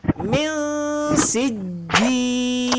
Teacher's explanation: Sij ada sabdu, jadi kena tahan. Kena tekan.